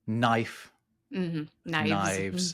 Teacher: an F in Old English, if it appears in the middle of a word and is between two vowel sounds, or L in this case, it makes a V sound